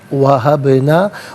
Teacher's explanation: من دون اللہ وہبنا، باز ساکن ہے لیکن حرف قلقلہ ہے تو آواز لوٹتی بھی محسوس ہونی چاہیے